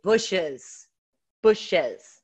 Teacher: we are literally inserting a vowel in there even though it's not written · We're inserting a vowel, and you can argue it's E-Z or E-S.